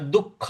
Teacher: दु के आगे जो विसर्ग है इसका, इसके आगे ख है तो यहां पर आधा ख का हमको उच्चारण लाना है, दुख ऐसे बोलना है।